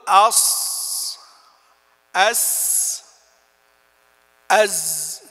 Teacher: أيوة، المخرج الثالث عشر هو لحروف الصفير، وهي الصاد والزاي والسين، وهي تخرج من بين من ما بين طرف اللسان وفويق الثنايا السفلى